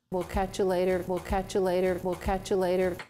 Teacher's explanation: the word you since it is unstressed gets reduced and that's why it sounds like a neutralized vowel